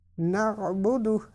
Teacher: اب یہ عین جو ہے اس کو حلق کے درمیان سے ادا کریں گے